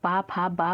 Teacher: हिंदी की ओष्ठ व्यंजन ध्वनियां क्या है तो ओष्ठ यानी कि ओठों से बोली जाती हैं